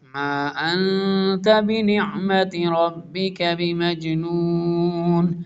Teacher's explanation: انت، میم کے اوپر مد ہے، تھوڑا سا لانگ کریں گے، اس کے بعد نون ساکن ہے، اس کے بعد تا ہے، اخفا ہوگا